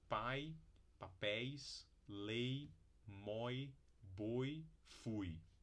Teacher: exemplos de ditongos decrescentes, que vai da vogal para o glide